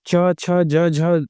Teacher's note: च ज झ बोलेंगे आप ञ बोलेंगे तो कहीं ना कहीं तालु का प्रयोग होगा। तो आप देखेंगे कि ये जो है ये तालव्य व्यंजन के अंतर्गत आते हैं।